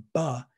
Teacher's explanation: when you say buh, your voicing comes on sooner, right away, because buh is a voiced consonant.